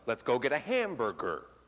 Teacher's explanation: in American English we have something which is called a pitch drop at the end of a sentence